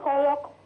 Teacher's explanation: وأخلي بالي من القلقلة في القاف خلق عند الوقف